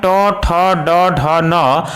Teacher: इन सभी वर्णों का उच्चारण मूर्धा से होता है।